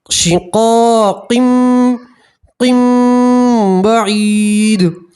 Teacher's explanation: اور یہاں تنوین کا اقلاب کا قاعدہ ہے تو تنوین کو آپ پہلے میم سے ملائیں گے اور اخفار غنہ کے ساتھ پڑھیں گے